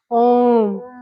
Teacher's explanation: दीर्घ स्वर से ज्यादा समय लग रहा है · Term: प्लुप्त स्वर